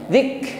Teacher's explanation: Jadi ada nafas yang mengalir di situ, tetapi alirannya tidak sepanjang huruf yang memiliki sifat rakhawah. Karena kaf ini sifatnya syiddah dan hamas saja, tidak diikuti dengan rakhawah, maka hamasnya jangan dipanjangkan.